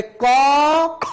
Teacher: ক বর্ণ দিয়ে অল্প বাতাস বের হয় তাই একে বলা হয় অল্প প্রাণ, আর খ বর্ণ উচ্চারণ করার সময় বেশি বাতাস বের হয়